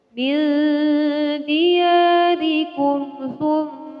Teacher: Cara membaca gunnah adalah dengan menahan kira-kira sampai 3 ketukan. Jadi tidak boleh terburu-buru ya.